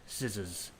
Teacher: So if you look at the shape of my mouth when I say the two words S and Z, it's the same. It's just that the Z is voiced and the S is not voiced.